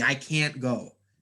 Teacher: a lot of times when americans or native speakers are speaking you can barely hear the t